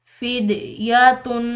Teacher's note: دال جو ہے یہ حروف قلقلہ میں سے آ رہی ہے، تو اس دال کو ہم نے ہلا کر ادا کرنا ہے